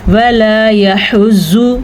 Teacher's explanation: ज़्वाद को पुर पढ़ना है लेकिन ज़्वाद को खींच के नहीं पढ़ना, यानी कि लंबा नहीं करना।